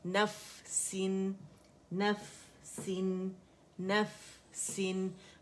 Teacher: फा का हम्स रखावा हमने शो करना है